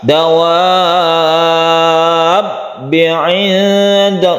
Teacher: Dawanya dipanjangkan dulu sampai 6 harokat atau 3 alif baru ditasydidkan ke ba. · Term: mad lazim mutawal